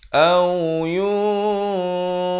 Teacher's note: ikhfa hakiki di sini dibaca dengan samar 2 harakat. Fau, dimuncungkan mulut.